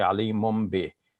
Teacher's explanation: Ali mun bi, it's smoother to say Ali mum bi, because with the bi, the lips are going to touch, and with the noon, the lips do not touch. So we're just preparing for the bi in advance by making the lips touch now, and then it produces an M sound instead of the N sound.